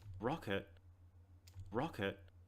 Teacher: because i'm from australia and the way i pronounce words i pronounce the end of letters like t and d hard